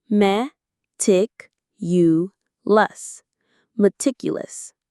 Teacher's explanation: Meticulous. The stress is on the second syllable, tic.